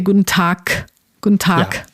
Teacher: this g sound in the end is not a g, but a k. So you wouldn't say Guten Tag, but you would say Guten Tag.